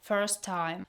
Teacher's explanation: The second T is not pronounced. Some speakers may fully pronounce both T's, but it's not used in fast speech.